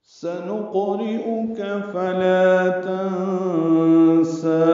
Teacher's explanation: نون کو قاف سے ملانا ہے، نقو قاف پر ہے اور اس پہ قلقلہ ہے